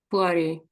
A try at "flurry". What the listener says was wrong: Yeah, yeah, almost flurry, flurry. Yeah, it's the R's is a little bit out, I think, there, isn't it? Flurry. Are you saying the R's? Flurry. Or is it the vowel? I can't tell now.